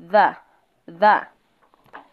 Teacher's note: Jambo la pili ni sauti ya menoni. Inapotamkwa unapata kwamba inatamkiwa kwa meno.